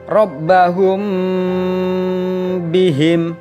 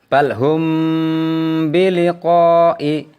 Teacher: dengan huruf ba bibir atas dan bawah dalam posisi tertutup jadi Ikhfa Syafawi harus dibaca samar-samar di bibir dan didengungkan